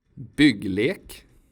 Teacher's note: The short form of y sounds like [ʏ].